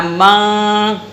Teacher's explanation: تھوڑی آواز آپ کے ناک میں رہے گی اور کچھ آپ کے حلق کے اندر رہے گی. اگر آپ نے زبان کو تالو سے لگا دیا تو وہ تمہارا اخفا سیدہ نہیں ہوا.